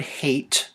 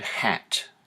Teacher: So the hate, the A sound is at the front of the mouth. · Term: front vowels